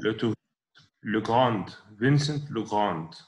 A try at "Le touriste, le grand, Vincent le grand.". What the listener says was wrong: Non, مش هننطق الدي ده. هنقول le grand, Vincent le grand.